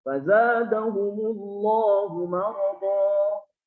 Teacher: Cukup mad iwad itu satu harokat.